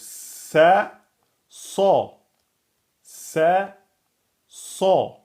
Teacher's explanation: Vous voyez, elles ont le même point de sortie, donc c'est facile de les inverser. Et on a ici l'emphatisation de la lettre sin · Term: Emphatique